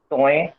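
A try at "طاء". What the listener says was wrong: توئیں نہیں، توئیں a sound پہ ختم ہوا تو کیا ہو جائے گا؟ تو.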